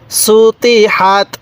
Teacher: এই হা টা উচ্চারণের সময় মুখ দিয়ে হালকা বাতাস বের করব